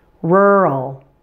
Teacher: the first syllable is much louder and longer than the second